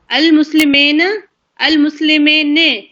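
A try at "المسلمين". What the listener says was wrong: بدل کیوں دیا؟ مسلمینہ ہے یہ، مسلمین کیسے ہو گیا یہ؟ کہاں نظر آ رہی ہے آپ کو نون کے نیچے زیر؟ کیوں آئے گی؟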